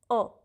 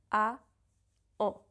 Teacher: Put your mouth in the position of an A, wide and open, and then lower your soft palate. En. So you can go from A to en.